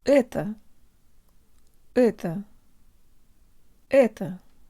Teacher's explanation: Tell your brain the O represents a schwa vowel and make sure to de-emphasize the last syllable.